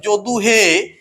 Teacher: আহ্বান করে যে যদু হে এই যে হে এই এ স্বরধ্বনিটিকে এই হে এ স্বরধ্বনিটিকে যে আমরা টেনে টেনে উচ্চারণ করছি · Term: প্লুতস্বর